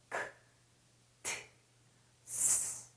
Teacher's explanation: 이런 발음은 성대가 절대로 울리지 않습니다. 왜냐고요? 바람 소리거든요. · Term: 무성음